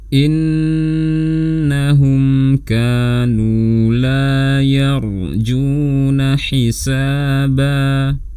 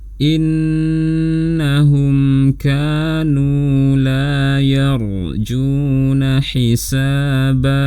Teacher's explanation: ada nun bertasydid, dibaca gunnah yang dipanjangkan, kemudian ada mim sukun bertemu dengan kaf izhar syafawi, ada mad tabi'i lagi, ra sukun sebelumnya fathah dibaca tebal, ada mad tabi'i lagi dan mad awad.